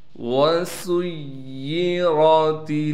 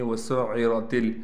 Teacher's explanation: یا کو بالکل مخرج سے نکالنا ہے، یا پر تشدید ہونے کی وجہ سے تھوڑا ٹھہراؤ کریں گے، را کو موٹا کر کے پڑھیں گے۔